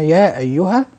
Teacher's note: الاصل وايها كلمه اخرى نعم ولكنها في الرسم كتبت كلمه واحده فهذا مد منفصل يمد اربع حركات من طريق الشاطبيه · فهذا مد منفصل يمد أربع حركات من طريق الشاطبية